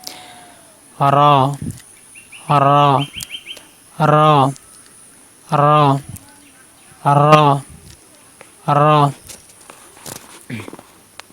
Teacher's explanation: জিহ্বার আগার পিঠ মানে জিহ্বার আগাটা হালকা একটু বেঁকা করে দিয়ে উচ্চারণ করবেন। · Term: র হরফ